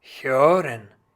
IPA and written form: ˈhøːʀən (hören)